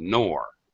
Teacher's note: the word enormous stressed on the second syllable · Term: primary stress